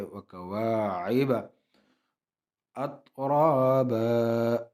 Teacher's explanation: وَأَعْنَابًا وَكَوَاعِبَ، وَكَوَا الف مدہ الف خالی آگے زبر ہے، ایک الف کی مقدار اس کو کھینچیں گے